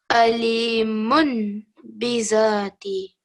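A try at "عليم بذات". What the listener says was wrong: So remember, the miniature meme is going to take away the sound of the mun. So it's going to be mum. So it will be alimum bidhati. So we're just replacing the un sound or the un sound with a meme.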